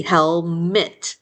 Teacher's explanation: That second syllable, we get lazy and turn our vowels into schwas a lot of times.